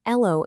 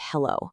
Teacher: Take H-dropping, for example, saying ello instead of hello.